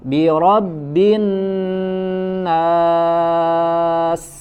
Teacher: ketika nun dipanjangkan harokatnya fathah, maka dia menjadi al-jauf makhrajnya ya. Jadi tidak masuk ke dalam hidung suaranya.